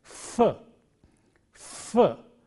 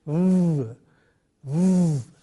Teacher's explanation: And when you come to the final consonant, v, v, there is friction there also. The difference between f and v is in the voicing. Initially, there is no voicing, it is a voiceless sound, and finally, it is a voice sound. And friction is very important in producing these sounds.